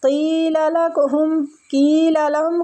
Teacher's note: کھینچیں گے یا مد کی وجہ سے، قیل لہم، قیل لہم، قاف کو مستعلیہ بھی پڑھیں گے اور یا مد بھی ہو رہی ہے